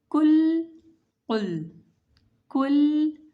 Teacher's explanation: Kaf is a light letter and Qaf is a heavy letter. Both are pronounced from the root of the tongue, but Kaf is pronounced when we touch the hard palate. The root of the tongue touch the hard palate, and Qaf is pronounced when the root of our tongue touch the soft palate towards our throat.